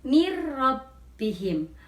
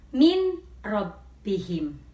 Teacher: nun mati lebur atau masuk ke dalam huruf ro menjadi mir rabbihim.